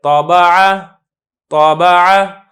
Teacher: جو حرف متحرک ہو اس کے اندر بھی قلقلہ ہوتا ہے، لیکن اس میں بہت ہلکا سا قلقلہ ہوتا ہے